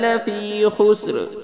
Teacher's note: خا کو موٹا پڑھنا ہے، سین سیٹی کی آواز نکالنی ہے ، را کو پھر موٹا پڑھنا ہے۔ ان الانسان لفی خسر،